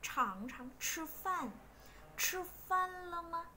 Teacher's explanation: CH đọc như chữ chờ nhưng mà nó bật hơi.